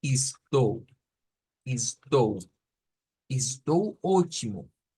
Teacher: si quiero sonar más a Brasil, a alguien que vive en Brasil, la ES al principio hágala como is